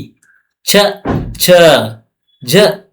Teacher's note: ತಾಲವ್ಯ, ದವಡೆಯ ಮತ್ತು ನಾಲಿಗೆಯ ಸಹಾಯದಿಂದ ಹುಟ್ಟುವು